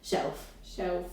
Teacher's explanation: you sort of replaced the L with vocalised W